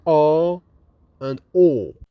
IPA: a: and ɔː